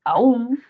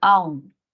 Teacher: Esta expresión aún, esta palabra aún, dice, el adverbio aún puede pronunciarse en español como una palabra tónica, es decir, con hiato, o como una palabra átona, quiere decir con diptongo